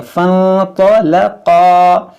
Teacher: अब आप यहाँ पर गौर करें कि ये जो फ़ा के बीच में अलिफ है, इस अलिफ को नहीं पढ़ेंगे, इस फ़ा को नून से मिलाएंगे और नून साकिन के बाद तो है तो यहाँ पर इख्फा करेंगे। फंतलक़ा, तो हुर्फ़ मुश्तालिया मोटा करेंगे, क़ाफ को मोटा करेंगे।